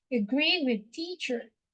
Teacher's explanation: your A and the E sound before R is a schwa sound